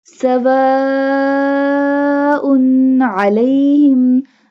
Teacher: We stretch the long mud up to 5 alif.